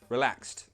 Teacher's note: So in that word, we pronounce the ed like a t sound.